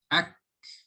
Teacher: comes from the back of the tongue touching the hard palate so you guys hear the little flow of breath afterwards